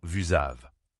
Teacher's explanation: Dans vous avez, le S de vous se transforme également en Z. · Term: liaison